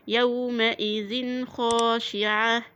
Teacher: انا هبين التنوين واقول يومئذ خاشعة، يبقى انا ايه؟ ما اجيبش غنة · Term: الإظهار الحلقي